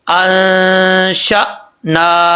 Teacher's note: نون کے اوپر کھڑا زبر ہے تو ایک الف کی مقدار لمبا کریں گے